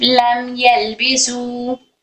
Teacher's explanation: लम लंबा नहीं, लम नाक में घुमाएंगे नहीं, सिर्फ लम यलबिसु।